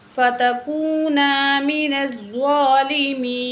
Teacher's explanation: زوا کو پر کر کے پڑھیں گے، موٹا کر کے پڑھیں گے. ٹھیک ہے، من الظالمين کھینچ کے بھی پڑھیں گے، یہاں کھڑی زبر ہے.